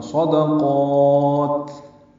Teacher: دال باریک ہے، قاف کو لمبا کریں گے اور تا ساکن پہ ہمس ہوگا وقفاً